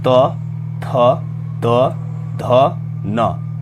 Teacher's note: दंत्य दांतों के मूल से